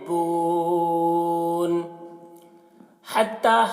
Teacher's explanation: हा को हलक से अदा करते हैं, इसकी आवाज़ एक हवा के साथ में निकलती है। ता देखिए ता है, इस ता को बारीक पढ़ते हैं और ता में जो मद है इस मद को मद्दे मुनफसिल कहते हैं।